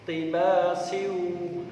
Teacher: ada tanwin bertemu waw, harus dibaca idgham bi gunnah, memasukkan suaranya tanwin pada huruf berikutnya. Karena ini diwasolkan atau disambung, maka membacanya harus idgham.